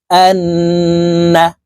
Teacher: এই হামজা তাশদি নুনের সাথে নাকের বাঁশি থেকে তিন সেকেন্ড পরিমাণ ধরে রাখবো গুন্না করে পড়বো